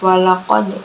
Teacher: walaqad itu qalqalah sughra karena huruf qalqalah di tengah-tengah kalimat, cara bacanya dipantulkan